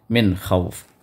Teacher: پھر اس کے بعد من خوف، تو یہاں پر نون ساکنہ ہے، اور نون ساکنہ کے بعد خا آ گیا جو حروف اظہار میں سے ہے، تو یہاں پر نون کو ظاہر کر کے پڑھیں گے. تو من خوف، من خوف نہیں پڑھنا ہے، من خوف.